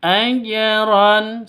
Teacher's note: Nah, karena jimah sukun itu hurufnya qalqalah, maka ini berlaku hukum qalqalah. Di tengah seperti ini namanya qalqalah sugro. Lebih rendah pantulannya, lebih tipis. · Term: qalqalah sughra